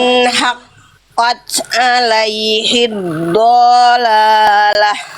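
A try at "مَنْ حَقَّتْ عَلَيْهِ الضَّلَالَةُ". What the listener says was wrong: Dotnya bagus, tapi berapa harokat dotnya? Dotnya pendek. Fathahnya nggak ada alif setelahnya.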